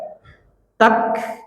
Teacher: Ka keluar anginnya ketika sukun, punya sifat al-hamas, keluar anginnya.